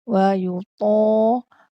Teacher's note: Ketika menyebut huruf ta, pastikan ta tu tebal dan tertutup. Wa yuta. Di sini berlaku pemanjangan harakat sebab ada alif sebelumnya, selepas huruf ta.